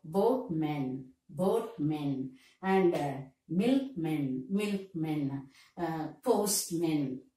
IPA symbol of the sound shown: mən